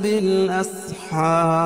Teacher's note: وقفہ کی صورت میں یہ مد عارض وقفیہ ہوگا